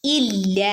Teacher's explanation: ലാമിന് ശദ്ദും വന്നിട്ടുണ്ട് മദ്ദും വന്നിട്ടുണ്ട് ഒന്ന് കട്ടി കൂട്ടുകയും വേണം രണ്ട് അനക്കം നീട്ടുകയും വേണം